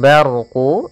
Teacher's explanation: ada huruf ra yang berharakat sukun sebelumnya fathah, kita namakan dengan ra tafkhim, ra yang tebal